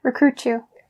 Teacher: So you don't say recruit and then you, but when you link the T sound here with the y sound, that starts the word you here. And then you'll have the ch. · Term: the CH sound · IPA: tʃ